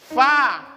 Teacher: Karena ucapannya bibir bawah ketemu dengan gigi atas.